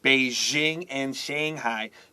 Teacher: 那 个 J 的 那 个 声 音 Jing， 它 会 有 那 个 摩 擦 的 声 音